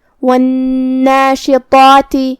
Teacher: جو کہ مد الف اپنے پیچھے والے حرف کا حکم لیتا ہے تفخیم میں اور ترقیق میں، اور جو کہ اس سے پہلے حرف تفخیم ہے تو ہم طا کو اور مد الف کو دونوں کو بھاری آواز میں ادا کریں گے. آخری میں تا کے نیچے زیر ہے تو اس کا دھیان رہے.